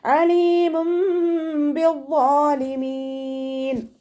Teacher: അപ്പോൾ തെൻവീനിലുള്ള നൂനിന് നമ്മൾ മീമാക്കി മാറ്റി മറിച്ചിട്ട് ഒന്നയോടുകൂടി ഓതി കൊടുക്കുക. നൂനിൻ്റെ സൗണ്ടിനെ അവിടെ കേൾക്കുകയില്ല, മീമാക്കി മാറ്റി മറിക്കുക